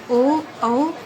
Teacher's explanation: वायु कंठ और ओष्ठ दोनों जगह से टकराती हुई बाहर निकलती है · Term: कंठोष्ठी वर्ण